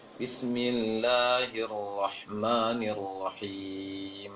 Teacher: Seharusnya di stop langsung mimnya tanpa ditahan lama seperti itu. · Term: mim sukun